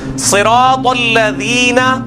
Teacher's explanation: زبان کی نوک کو اوپر کے دانتوں کی نوک پہ لگانا ہے اور سیٹی کی آواز ختم کرنی ہے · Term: ذال